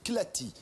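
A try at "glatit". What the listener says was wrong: Glati, pas Clati. Glati, avec un G comme Gad.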